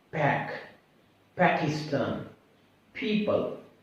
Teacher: We have the one sound, that is the P sound, and we produce a sound P, like pack, Pakistan, people. It is the voiceless sound. Number 1, the air comes through our lungs.